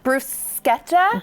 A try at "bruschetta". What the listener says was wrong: It's not bruschetta. In Italian, when you have CH, it's K, which is like counterintuitive to us Americans, but it is bruschetta.